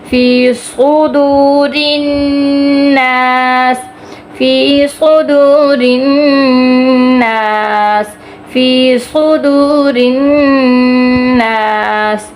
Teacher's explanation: فی صدور سین پڑھ لیتے ہیں جبکہ یہاں پہ صاد ہے.